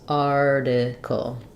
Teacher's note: This T is flapped.